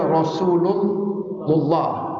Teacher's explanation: Kalaulah bunyi sebelumnya fathah bari atas, maka la ni juga wajib tebal.